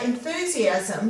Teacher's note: You've got a long vowel sound with the U here, so you've only got one S after it. Now, the S followed by the I is making the Z sound, and that's the more common sound for the letter S than S.